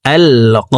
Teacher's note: কফকে এক আলিফ টেনে পড়তে হবে, কারণ জবরের বাম পাশে খালি আলিফ, মদের হরফ ডান দিকের হরকতকে এক আলিফ টেনিয়া পড়িতে হয়।